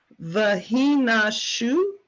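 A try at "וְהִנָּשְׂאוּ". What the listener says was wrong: It's a sin, not a shin. You're so close.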